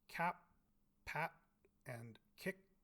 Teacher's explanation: have three variants they have the aspirated versions as well as the unreleased versions where we don't entirely release the stop in our mouth so something like the sounds at the ends of cap pat